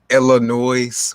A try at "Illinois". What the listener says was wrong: my God, the S is silent. You don't say Illinois with an S.